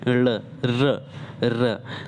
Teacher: वायु जो है जीभ से टकराकर लुढ़कती हुई लगती है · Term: लुटित व्यंजन